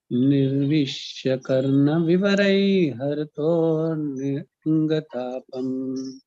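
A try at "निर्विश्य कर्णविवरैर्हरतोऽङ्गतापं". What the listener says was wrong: Prabhu, తర్వాత మళ్ళీ ఆ అని అనక్కర్లేదు ప్రభుజీ. హరతో గతాపం అందులో వచ్చేయాలన్నమాట. ఆ పైన వస్తుందని మళ్ళీ ఆ అని మనం పలకక్కర్లేదు ప్రభుజీ. నిర్విష్య కర్ణ వివరైర్ హరతో గతాపం.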